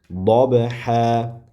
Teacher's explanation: ba harfi sukunlik bo'lganda qalqala bo'ladi. Dob, d shu tartibda demak qalqaliq sifati bilan o'qiymiz.